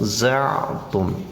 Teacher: ain ini adalah wastul halqi, pertengahan tenggorokan